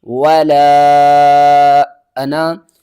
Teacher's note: واو کے اوپر زبر ہے، اس کو ہم نے ہرگز نہیں کھینچنا · اوپر زبر ہے، اس کو ہم نے ہرگز نہیں کھینچنا، اور لام کے بعد دیکھیں تو الف کے اوپر چھوٹی مد ہے، تین الف کے برابر کھینچ کر پڑھنا ہے ۔ زیادہ تر لوگ یہاں پر کنفیوز ہوتے ہیں کہ اس